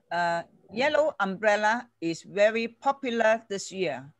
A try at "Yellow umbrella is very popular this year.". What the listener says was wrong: Yes, ▁yes.